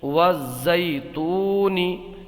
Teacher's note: یہاں پر یا لین ہوگا، یا ساکن سے پہلے زبر ہے نہیں کھینچیں گے، اور یہاں پر واو مدہ ہوگا، واو ساکن سے پہلے پیش ہے تو اس کو ایک الف کھینچ کر کے پڑھیں گے